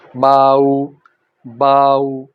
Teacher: और अगर वाव साकिन आ जाए तो सामने जाएगी, ज़बर की आवाज़ ऊपर जाकर वाव की वजह से सामने चले जाएगी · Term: मुड़ती हुई आवाज़